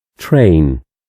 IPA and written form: treɪn (Train)